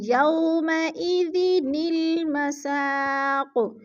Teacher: نون کو لام کے ساتھ جوڑ کے ہم نے لفظ کو جوڑنا ہے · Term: نون قطنی